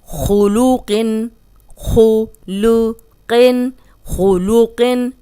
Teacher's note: اب خو موٹا ہے، قوف موٹا ہے اور لام بیچ میں باریک ہے، اس لام کو ہم نے موٹا نہیں کرنا